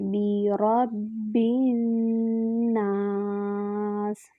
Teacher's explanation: برب الناس، با کے نیچے کسرہ ہے اور با کو نون سے ملائیں گے۔ برب الناس، با کو جب ہم نون سے ملائیں گے تو 2 حرکات برابر غنہ کریں گے